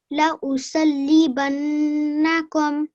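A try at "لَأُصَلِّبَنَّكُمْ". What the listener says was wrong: Okay, well done. Just don't rush through the li.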